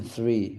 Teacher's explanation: The darkest sound is th, as in three, voiceless dental fricative, plus r.